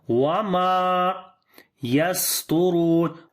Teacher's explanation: Turun, ta we read in heavy sound, ra we read also in heavy sound due to dhamma sign on it, and we long due to waw madda, because waw is coming with sukun sign and before there is dhamma. So this is waw madda, we long here 2 counts.